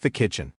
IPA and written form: ðə ˈkɪtʃɪn (The kitchen)